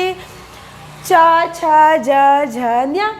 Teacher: च छ ज झ नञ इसका उच्चारण स्थान तालव्य है